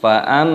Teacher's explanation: mimnya dibaca dengung mim tasdid dan dipanjangkan mimnya, didengungkan dulu, fa'am baru dipanjangkan fa'am seperti itu cara membacanya.